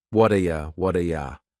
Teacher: that t at the end of the word what is going to change to a d sound.